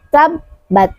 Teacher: makhrajnya adalah keluar dari ujung lisan bertemu dengan pangkal gigi seri atas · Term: huruf ta